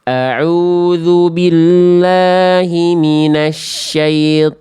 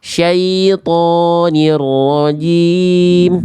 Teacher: jangan sampai terlalu panjang thnya cukup dibaca dua harakat saja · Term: 2 harokat